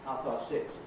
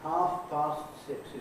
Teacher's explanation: the consonant that ends the first word is not released. You hold the position of the consonant with your tongue, but then you go straight on to the next consonant without inserting any sort of vowel gap in between.